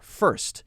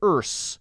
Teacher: Now, a lot of people struggle with this one because you have to jump from the R sound right into the S.